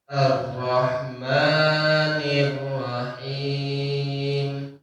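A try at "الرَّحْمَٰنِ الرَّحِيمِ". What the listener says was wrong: Ro-nya ro tebal ya. Dan ditahan dulu. Pak, kalau tasydid itu ditahan dulu, Pak, ya. Ditahan baru dikeluarin. Ar-Rahmanir Rahim. Dan ma-nya 2 harokat aja, Mas. Ar-Rahmanir Rahim. Suaranya jangan masuk ke hidung. Terus yang kedua, haknya sama ro-nya diperbaiki lagi.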